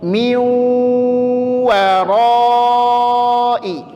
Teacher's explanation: maka dia posisi wawnya, posisi dengungnya mesti dalam keadaan dimonyongkan. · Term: idgham bi gunnah